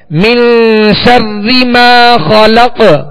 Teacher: ما خلق خا کو پر پڑھیں گے حروف مستعلیہ میں سے، اور قاف پر ہم نے وقف کیا، یہاں ساکن ہے اور وقت کی صورت میں ہم نے اس کو ساکن کیا تو یہاں پہ قلقلہ ہوگا